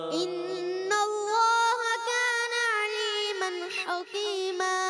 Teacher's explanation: حکیمہ میں ہا کو پر نہیں کرنا، باریک رکھنا ہے